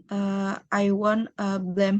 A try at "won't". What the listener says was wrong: Bacanya won't, bukan I want ya. Won't.